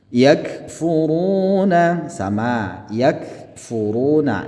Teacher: kaf ini ketika dia berharokat sukun maka dia harus didesiskan